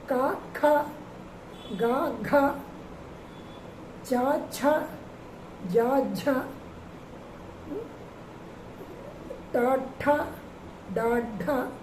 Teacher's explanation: ఈ 2 అక్షరాలు 4వ అక్షరం కూడా మహాప్రాణాలు పలకాలి, గట్టిగా పలకాలన్నమాట.